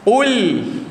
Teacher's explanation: Qul, buka mulut dia. Huruf lam yang mati jangan muncungkan, walaupun huruf qaf tu bagi depan.